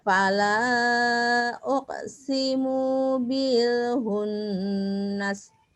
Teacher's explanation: Nunnya tahan. Harus ini ya dengung ya.